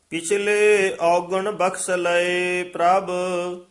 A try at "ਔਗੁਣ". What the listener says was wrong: ਪਿਛਲੇ ਔਗੁਣ ਇੱਥੇ ਠਮਕ ਹੈ। ਬਖਸ਼ ਲਏ ਪ੍ਰਭ, ਔਗਣ ਨਹੀਂ ਕਹਿਣਾ, ਦੋਵੇਂ ਔਂਕੜ ਔਗੁਣ।